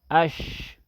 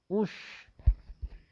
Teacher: حمزہ شین زبر اش، حمزہ شین زیر اش، حمزہ شین پیش اش. شین میں تفشی ہے، اس میں آواز منہ میں پھیل جاتی ہے